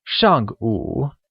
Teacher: where 上, meaning before, is said with a falling tone, and 午, meaning noon, is said with a falling rising tone, making it 上午, or before noon.